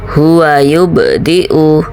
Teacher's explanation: Kemudian contoh selanjutnya huwa yubdi'u, ba. Nah, ini ba huruf qalqalah jadi dipantulkan sughra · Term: qalqalah sughra